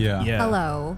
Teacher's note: people from NorCal tend to end their sentences like downwards